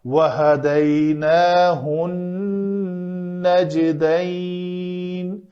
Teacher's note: نون کے اوپر تشدید آ گئی ہے, غنہ کرنا ہے.